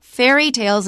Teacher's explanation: so fairy tales is how we say it don't stress tales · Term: compound